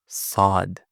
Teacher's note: the heavy letters, we make the tongue goes back and up